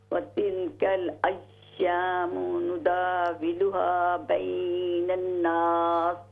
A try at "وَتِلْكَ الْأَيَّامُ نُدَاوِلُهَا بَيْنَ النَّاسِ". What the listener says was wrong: غنہ کیجیے نون میں. بین الناس.